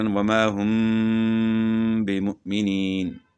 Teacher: میم ساکن کے بعد با آئی تو یہاں جو ہے نا اخفاء کے ساتھ ہم نے غنہ کرنا ہے